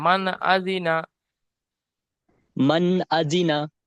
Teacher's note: নুন সাকিনের পরে হুরুফে হালকির 6টি অক্ষরের মধ্যে হামজা এসেছে, তাই নুন সাকিনের আওয়াজকে বিনা গুণনায় জাহির করে তাড়াতাড়ি পড়তে হবে। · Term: ইজহার